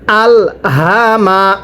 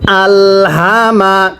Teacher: লাম জবর আল হা জবর হা এই যে গোল হাটি দেখতেছেন এই গোল হাটি উচ্চারণের সময় গলার মধ্যে আওয়াজ করে পড়তে হবে